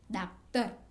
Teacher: विवृत आ का उच्चारण आ और ओ स्वरों के बीच का होता है। हम आ बोलते हैं और ओ बोलते हैं, उसके बीच में हमको यह स्वर निकलता है बोलने के लिए आ।